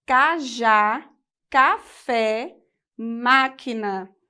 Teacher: marca a posição da sílaba tônica e o timbre aberto